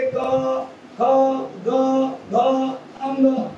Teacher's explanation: या मुख्य जिभेचा मागील भाग वरती उचलला जातो आणि वरती उचलून आपली जी काही पडजीभ आहे त्या पडजिभेला जाऊन टेकतो आणि पडजिभेला जाऊन थोडासा हलकासा टेकल्यानंतर जे वर्ण उच्चारले जातात त्यांना कंठवर्ण असे म्हणतात.